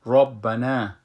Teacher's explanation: را را بلند خانده میشه پر خوانده میشه